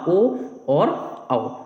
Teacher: कंठ प्लस ओष्ठ स्वर, जिनको हम कंठोष्ठ स्वर भी कह सकते हैं, उसमें होता है आपका ओ और औ।